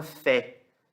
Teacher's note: O segol, ele tem o som de E aberto.